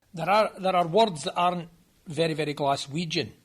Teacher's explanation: here's a clip of a speaker from Glasgow that illustrates that trilled R in Modern English